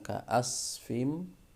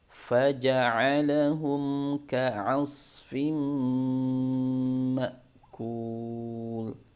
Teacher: huruf ain, jangan lupa huruf ain makhrajnya dari tengah tenggorokan